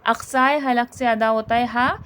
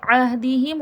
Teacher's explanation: اقصائے حلق سے ادا ہوتا ہے ہا، جو حلق کے آخری حصہ کہلاتا ہے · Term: حرف حلقی